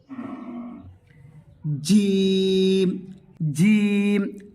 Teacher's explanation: জিহবার মাঝের অংশ এবং সেই অংশের বুগল উপরের তালু থেকে আদায় হবে